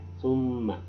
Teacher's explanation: Jadi kalau ada mim itu ketemu atau di situ diikuti oleh tasdid namanya ya, itu dibaca gunnah, didengungkan sedikit ya, 2 harokat. Summa, jadi tidak boleh dibaca summa, harus didengungkan summa.